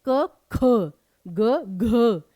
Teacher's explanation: ख और घ बोलने में जान लगती है, वो महाप्राण, और क ग इजीली बोल दिया तो आपका अल्प प्राण ध्वनि